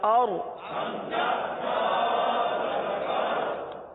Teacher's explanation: آگے حمزہ را زبر اور. اور را کے لیے زبان کو اٹھائیے، را کو پر پڑھیں گے، کیونکہ را ساکن سے پہلے زبر یا پیش آ جائے تو را کو پر پڑھا جاتا ہے، لہذا اس را کو پر پڑھیں گے.